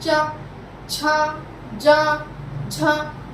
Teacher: जब आप इन वर्णों को उच्चारण करेंगे तो आपकी जीवा मुंह के आगे वाले हिस्से से टकराएगी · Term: तालव्य